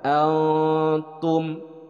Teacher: nun sukun bertemu dengan ta. Ini disebut dengan ikhfa. Jadi dibacanya didengungkan.